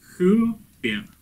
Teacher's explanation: такое придыхание называют густым, и при произнесении слова оно в начало слова добавляет звук «х». То есть слово «хюпер» произносится именно вот так. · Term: густого придыхания